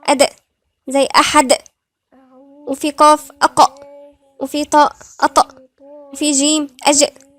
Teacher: فدول كلهم بنقلقلهم، يعني في اهتزاز في الصوت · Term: قلقلة